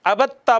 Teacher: دال کا ادغام ہو گیا ہے آگے تا میں